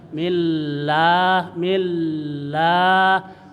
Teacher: millah lanya dipanjangkan dua ketukan